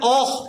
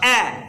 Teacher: যদি বলেন ওহ তাহলে হামজা মোটা হয়ে গেছে, হামজা পাতলা হবে